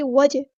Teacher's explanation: جیم میں کلکلا ہوگا، آواز میں باؤنس آئے گی، یہاں پر ایکو پیدا ہوگی۔